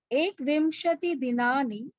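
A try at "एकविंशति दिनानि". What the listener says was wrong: Ekavimshati na. Ekavimshati dinani. There is no automatic killing of any swara in Sanskrit.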